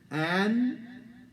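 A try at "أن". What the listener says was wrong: You hear the difference between and an? This is an.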